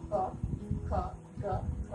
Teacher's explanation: जब हम ग का उच्चारण करें तो हमारी जीभ का पिछला भाग मुंह के पिछले भाग से टच करता है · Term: क वर्ग